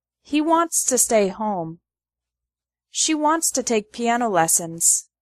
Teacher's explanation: Wants to becomes wantsta. He wants to stay home.